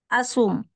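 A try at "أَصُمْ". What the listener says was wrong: Nah, asum. Jangan dipanjang, baunya hapus.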